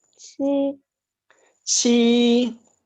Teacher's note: High pitch and long. No rising, no falling. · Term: first tone